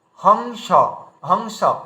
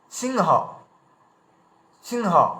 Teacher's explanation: এখানে কিন্তু উয়া ইয়া ম কিছু উচ্চারণ করলাম না, আমরা সরাসরি এখানে উচ্চারণ করলাম বং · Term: অনুস্বারের উচ্চারণ